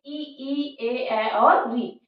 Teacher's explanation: जिह्वा के अग्र भाग में कंपन होता है, इसीलिए इनको अग्र स्वर कहा जाता है